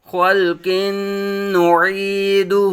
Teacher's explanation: پہ آواز ساکن ہو جائے، خل، قاف پر مستعلیہ تنوین منون، تنوین کے بعد حروف یرملون میں سے نون آنے کی وجہ سے ادغام مع غنہ ہوگا ، نون مشدد میں ہمیشہ غنہ ہوگا، عین متحرک، یا ساکن